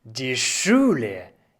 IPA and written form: diː ˈʃuːlə (die Schule)